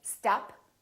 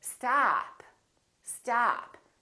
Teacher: this vowel is usually longer than most people who are non-native speakers tend to make it. So don't say stop, say stop, stop.